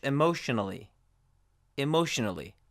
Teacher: case but pay attention here emotionally ends with an N so we do pronounce the a as a schwa